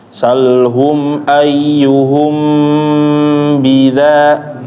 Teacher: ketika mim ketemu ba, bacaannya ditahan ya, jangan langsung pindah.